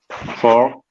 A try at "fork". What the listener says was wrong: Fork. Don't forget the K in the end. Fork.